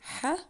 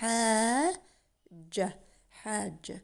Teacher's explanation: And you can see the ha has mad bil alif, so we stretch it. We read it longer. We don't say ha, we say hajja.